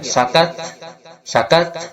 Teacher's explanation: ketika dibunyikan itu ada hembusan nafas dan akan jelas ketika dia itu sukun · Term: huruf Hamas